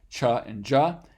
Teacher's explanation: will also mention that we have uh two affricates um or combinations of stops and fricatives at the exact same place of articulation